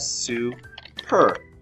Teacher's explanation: this U is ending the syllable and is making that long U sound